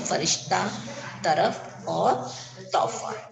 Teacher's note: और फ, इसे बोलते समय होठ नहीं मिलते हैं। ठीक है, फ आप बोल के देखो, फ जब आप इसे बोलोगे तब क्या होगा कि होठ आपस में मिलेंगे नहीं।